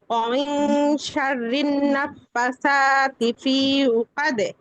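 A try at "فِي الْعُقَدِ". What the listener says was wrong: পি টান হবে না, ফালাম জের ফিল, ফিল উকদ। খেয়াল করে আপু, খেয়াল করি, ভুলটা যখন ধরা হয় তখন খেয়াল করে শুনতে হবে আগে কি ভুল হচ্ছে।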